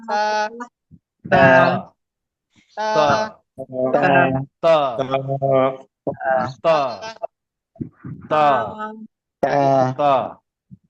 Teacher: জিহ্বার আগা উপরের দাঁতের গোড়ার স্পর্শ করুন।